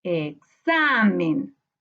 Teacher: la sílaba tónica está en la penúltima sílaba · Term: grave